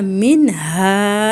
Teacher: अब यहां नून साकिन के बाद हरूफ हल्की के लेटर में से हां मिनहा ऐसे पढ़ेंगे। ये नून की आवाज क्लियर आएगी। छुपाएंगे नहीं। · اب یہاں نون ساکن کے بعد حروف ہلکی کے لیٹر میں سے ہا ہے تو یہاں من ہا ایسے پڑھیں گے. یہ نون کی آواز کلیئر آئے گی چھپائیں گے نہیں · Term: اظہار